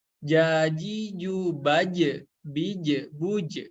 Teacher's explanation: Tapi huruf jim ini memiliki sifatnya itu tipis ya. Nah, ketika sobat menemukan huruf yang tipis dan qalqalah, maka pantulannya itu kurang lebih ke E ya